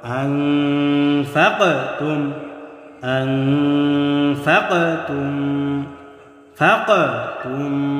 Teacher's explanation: কফ হলো কলকলা হরফ প্রতিধ্বনি আওয়াজ হবে ধাক্কা দিয়ে পড়তে হবে